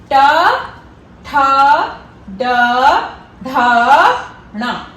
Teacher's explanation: आपका जो टंग का टिप है वो आपके पैलेट को ऊपर टच करता है, middle part of the पैलेट।